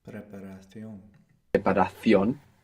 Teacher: And this Cion is pronounced sion, like an S, Sion. in most of the Spanish-speaking world, or in most of Spain, it's pronounced ción.